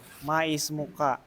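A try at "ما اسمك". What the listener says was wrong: Ini hamzahnya. Hadihi hamzah hamzatul wasal. Jadi dibacanya muka, bukan mais muka.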